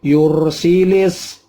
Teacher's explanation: yur ada ro mati, sebelumnya ada dhammah. Itu dibaca tafkhim tebal